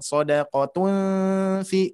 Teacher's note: Hijau ikhfa ya. Jadi dengungannya itu sedikit mendekati eng, nah gitu ya.